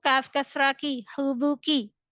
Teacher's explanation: So in this word, kaf kasra will read with light tone.